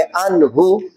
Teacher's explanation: نون ساکن ہو اور اس کے بعد حروف ہلکی آ جائے تو وہاں اظہار ہوتا ہے، اس لیے یہاں غنہ نہیں کریں گے بلکہ نون کو ظاہر کر کے پڑھیں گے